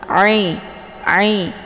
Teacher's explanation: tempat keluar huruf ain ini di tenggorokan bagian tengah. Ai, dan dia bacaannya lunak.